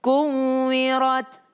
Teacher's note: ta berada di akhir berarti dia ada desisnya sedikit